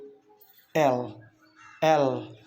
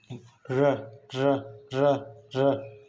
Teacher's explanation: When you say these sounds, so they are liquids because your air stream is actually escaping from your tongue. That's why flow around your tongue, as the tip of tongue makes contact with middle of the alveolar ridge.